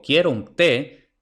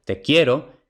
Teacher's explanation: la palabra que lleva tilde es tónica mientras que la palabra que no lleva tilde es átona